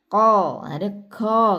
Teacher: Pangkal lidahnya bertemu dengan langit-langit yang di belakang, yang lunak.